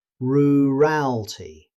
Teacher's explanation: in natural speech, the middle vowel may become very weak